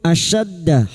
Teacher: huruf shin wastul lisan atau tengah lidah